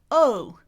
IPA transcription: oʊ